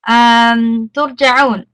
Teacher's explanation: we're gonna pronounce the ra sukun with a full mouth